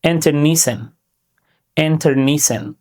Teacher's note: Say it in four parts, with a clear stress on NEE. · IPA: /ˌɪntərˈniːsaɪn/